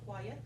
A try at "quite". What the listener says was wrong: No, you just said quiet, 2 syllables. Quiet means, quite. Oh, I'm not quite sure. Yeah, make sure, 1 syllable, yeah. If you say, quiet, bump up, 2 syllables, there. Quiet is silence, yeah. And I'm not quite sure, it means the same thing as really or somewhat, right?